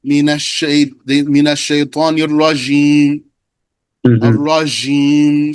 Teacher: Because jim and sheen are neighbors in the first place. So when the person didn't give the jim its due, it came out watery and sounded like a sheen. · some people make their jim sound like a sheen